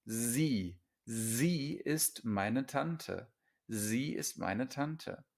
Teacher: So an S at the beginning of a word is Z.